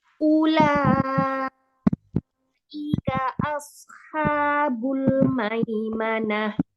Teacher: Sodnya angkat pangkal lidah walaupun sod sukun